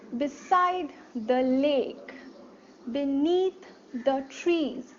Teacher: so unstressed stressed unstressed stressed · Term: iambic tetrameter